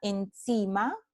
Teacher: tenemos la consonante nasal alveolar N que ocurre delante de una consonante alveolar, S · la nasal N, el alófono fiel es alveolar y ya se encuentra en la posición adecuada para pronunciar luego la consonante alveolar S. Las dos son alveolares.